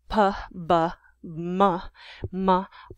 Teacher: All babies go through a babbling stage, and bilabial sounds made with the lips, p, b, m, m, are the easiest, earliest produced.